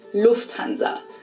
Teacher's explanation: In English, people usually say Lufthansa, but in German, we say Lufthansa. So the emphasis is on the first syllable.